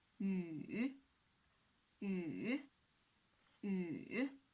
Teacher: And the third tone, from 2 to 1 to 4